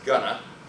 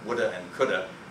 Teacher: We have going to ending up as gonna, so that's preposition ending up as a schwa. We have would have ending up as woulda, so that's would have and could have ending up as woulda and coulda.